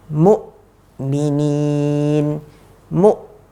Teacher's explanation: Hamzah ketika sukun dia tertahan dia enggak ada aliran sama sekali